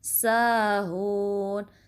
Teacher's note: سا کو 2 count stretch کریں گے